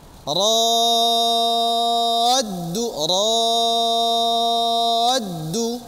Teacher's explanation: ketika perpindahan ro ke dal ini suaranya agak sedikit diangkat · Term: nabar